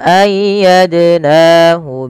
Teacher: Dal sukun sebagaimana yang awal wajib dipantulkan karena ia bacaan qalqalah